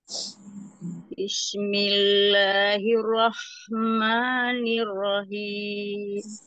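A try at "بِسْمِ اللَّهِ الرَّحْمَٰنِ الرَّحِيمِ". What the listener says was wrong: Sin ya, bukan Shin. Bismillahirrahmanirrahim.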